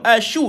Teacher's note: Dia ada sifat tafashi, dihamburkan bunyi dia tuan-tuan, dan dia ada sifat rakhawah, angin dikeluarkan tuan-tuan